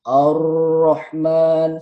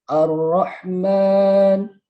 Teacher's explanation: Tapi yang benar Ar-Rahman. Tidak terlalu menggeletar.